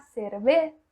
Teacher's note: Então é mais assoprado esse Z. A única coisa que você não pode é falar o Z com som de Z, porque isso não existe no espanhol, tá? · os espanhóis colocam muita língua para fora, principalmente na letra Z. É demais, chega a ser engraçado, é muito, muito engraçado da maneira com que eles falam isso, como sapato.